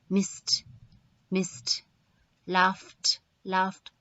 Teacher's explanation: the sound produced is unvoiced that means there's no vibration felt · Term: unvoiced sound